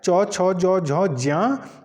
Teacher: च छ ज झ ज तो इसका उच्चारण स्थान क्या होगा तो इसका उच्चारण स्थान तालू होगा